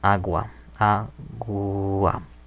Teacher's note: Si es sonora, g. Entre vocales tenemos de nuevo un cambio en español en vez de oclusivo a fricativo